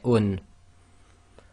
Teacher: So let's do a recap on this. So dhammatain is actually the oo sound with the noon sound added to it, so you get un.